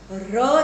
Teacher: ર જ્યારે બોલીએ છીએ ત્યારે જીભ આપણી ધ્રુજે છે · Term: પ્રકંપી વ્યંજન